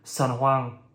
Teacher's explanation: Ene at the end of words can be pronounced further back in the mouth, so instead of San Juan, you might hear San Juan.